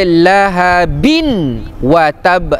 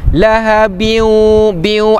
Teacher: tanwin berjumpa dengan waw, hukum dia idgham ma'al ghunnah.